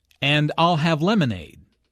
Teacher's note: Notice how stresses I'll and lemonade to emphasize her choice.